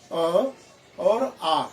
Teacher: अ और आ जो है गले से उच्चारण होता है, कंठ स्वर है वो